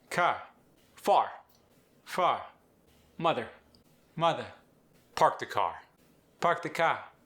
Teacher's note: New Zealand English is non-rhotic, meaning you drop the R at the end of words unless they're followed by a vowel.